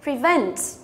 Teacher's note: Prevent cũng là động từ có hai âm tiết, trọng âm rơi vào âm thứ hai.